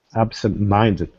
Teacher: absent and mind both get stressed but yes but mind is the most stressed and absent is · But mind is the most stressed, and absent is the second one. So absent is still stressed, but not as much as minded. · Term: two stresses